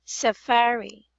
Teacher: the stress is on the middle middle syllable